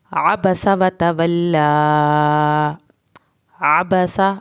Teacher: आइन को हल्क से पढ़ना है, बा और सीन की ज़बर को लंबा नहीं करना।